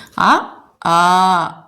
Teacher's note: ஆ ஆ இழுத்து சொல்லும்போது டைம் வந்து கொஞ்சம் எக்ஸ்ட்ரா ஆகுது இல்லையா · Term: நெடில்